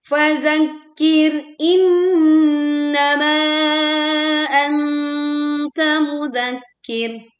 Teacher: Tekan kaf tasydid dan ro sukun karena waqaf didahului oleh kasrah sehingga dibaca tipis.